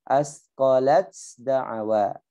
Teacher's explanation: Tidak boleh dibaca asqalat, taknya sendiri, dalnya sendiri. Enggak boleh. Harus jadi satu.